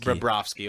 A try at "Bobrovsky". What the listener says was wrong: You added a syllable, but it's fine.